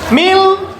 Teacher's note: Mil, memasukkan, nunnya dihilangkan, masuk ke huruf lam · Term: idgham bila gunah